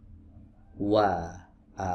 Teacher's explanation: huruf wau juga keluar dari dua bibir yang dikumpulkan ke depan ya